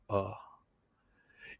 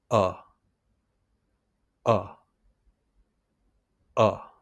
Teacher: This is a short neutral vowel sound made near the center of your mouth. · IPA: /ʌ/